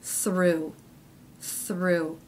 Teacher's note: begins with the unvoiced th, the r consonant, thr, and the u vowel